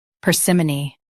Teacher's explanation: In US, stress par. In UK, stress par too, but si is softer.